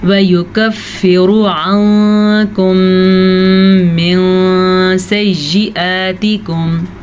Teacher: نون ساکن کے بعد کاف ہے جو کہ حروف اخفا میں سے ہے تو نون ساکن کو ہم چھپے ہوئے غنے کے ساتھ پڑھیں گے